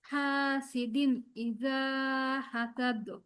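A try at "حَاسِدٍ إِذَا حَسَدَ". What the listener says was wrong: হাসাদ সিন এখানে আপু।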